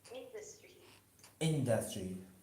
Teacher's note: in the industry the stress is on the first syllable